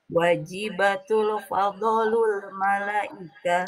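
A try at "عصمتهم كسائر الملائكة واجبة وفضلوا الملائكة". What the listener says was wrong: Nah, wajibatun wa kan ditulis hurufnya ada tuh. Wajibatun wa fadlul malaika.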